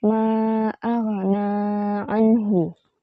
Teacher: membaca nun mati atau tanwin dengan jelas tanpa suara dengung atau disamarkan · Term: izhar